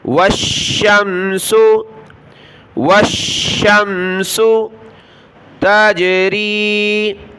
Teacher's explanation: واو کو شین کے ساتھ ملا، شین کو میم کے ساتھ